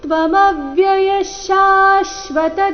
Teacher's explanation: ತ್ವಮವ್ಯಯ ಮೇಲೆ ಆಘಾತ ವಿಸರ್ಗದ ಉಚ್ಚಾರಣೆ ಶ ರೀತಿ